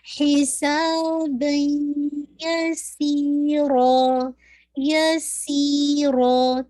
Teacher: دونوں کو سی اور را دونوں کو ٹو ٹو کاؤنٹ پڑھنا ہے. پہلی یا مدیہ ہے اور دوسری الف مدیہ ہے.